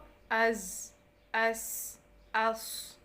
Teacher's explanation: हमारी ज़ुबान जो है दोनों दांतों के दरमियान में ही रह रही है। और इन हरूफ में भी आप देखें कि शिद्दत होती है, इनको ये साउंड इसमें होनी चाहिए, अज़।